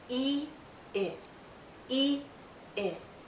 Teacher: our lips are more relaxed when we say I we go from tense to more relaxed e i e i and our mouth opens a bit more · So longer sound, shorter sound. More tense, more relaxed. And our mouth opens slightly more to say I.